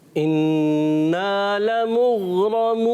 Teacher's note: غین میں قلقلہ بھی نہیں کرنا اور انا میں غنہ بھی کرنا ہے